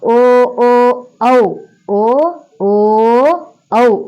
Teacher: కంఠోస్యములు కంఠోస్యములు అంటే కంఠము సహాయముతోను మరియు ఓస్ట్యము సహాయముతోను ఓస్యము అంటే పెదవి పెదవి సహాయంతోను కంఠము సహాయంతోను పలకబడేటటువంటి అక్షరాలు ధ్వనులు